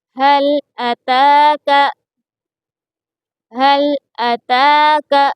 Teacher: تا کے اوپر کھڑا زبر ہے اس لیے اس کو تھوڑا کھینچ کر پڑھیں گے